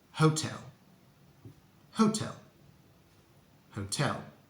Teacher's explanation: we need a nice round O in the first syllable and then uh the stress is on the second slip Hotel